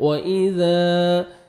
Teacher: ذال کو آپ نے نرمی سے ادا کرنا ہے، الف مد ہے، 1 سیکنڈ ذال کو آپ نے کھینچنا ہے